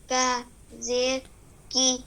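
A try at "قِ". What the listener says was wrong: No, it is not kaf, it is qaf. Qaf zir qi saqi.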